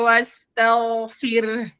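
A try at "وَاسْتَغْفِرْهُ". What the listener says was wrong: Enggak to tapi ta. Jadi ta tipis, ghain tebal, wasta ta tipis, tau. Ghain yang tebal.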